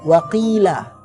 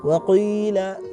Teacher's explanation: harokatnya kasrah, tapi dibaca dengan ismam seakan-akan itu suara dhamma. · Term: kasrah yang diismam